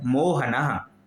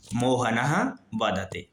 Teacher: तो मोहनः में देखिए विसर्ग का प्रयोग है, तो उच्चारण कैसा हो रहा है? मोहनः, ना के बाद विसर्ग है तो उच्चारण होगा ह का